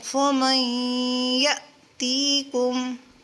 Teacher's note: یہاں پہ جھٹکا دیں گے کیونکہ حمزہ ساکن ہے تو اسی لیے یہاں پر اس کو جلدی یعنی جھٹکے سے پڑھیں گے